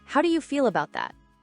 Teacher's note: Slight rise on that.